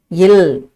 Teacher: மேல்வாய் பற்களின் அடியை நாவின் ஓரங்கள் தடித்து நெருங்குவதால் பிறக்கும் எழுத்து. அந்த எழுத்து இல் இதையே நாக்கு தடித்து தடவுவதால் இல் பிறக்கும். · நாவின் நுனி மேல்வாயின் நுனியை மிகவும் பொருந்துவதால் பிறக்கும் எழுத்துக்கள் இர் இல் என்பதாகும். மேல்வாய் பற்களின் அடியை நாவின் ஓரங்கள் தடித்து நெருங்குவதால் பிறக்கும் எழுத்து